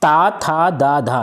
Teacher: ये दंत व्यंजन है